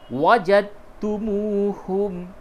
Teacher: دال نہیں پڑھا جائے گا، کیوں؟ کیونکہ دال کو تا میں ادغام کر دیا گیا ہے